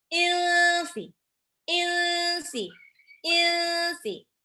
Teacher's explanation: Wal insi, nun sukun ketemu sin, itu ikhfa. Dibaca samar, nunnya hampir mau lompat ke sin, tapi ditahan 2-3 harokat.